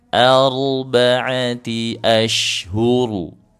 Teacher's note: Huruf ro sukun sebelumnya fathah. Ar tebalkan juga. naikkan pangkal lidahnya.